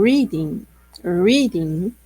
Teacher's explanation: Então, aquela que fica, que você percebe, por exemplo, quando eu falo reading, reading, então a sílaba tônica é a primeira, ela é mais alta e mais longa neste caso